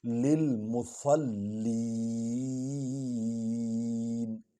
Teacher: فویل للمصلین، مصل، سواد اور لام کو اکٹھے پڑھیں گے اور لام پر زور آئے گا۔